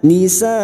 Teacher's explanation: kita panjangkan lima harakat karena terdapat hukum bacaan mad wajib muttasil bertemunya Mad dengan Hamzah dalam satu kalimat · Kita wakaf di sini maka bunyinya nisa. Kita panjangkan 5 harokat karena terdapat hukum bacaan mat wajib mutasil